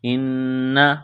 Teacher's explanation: غنہ کریں گے، آواز ناک میں چھپائیں گے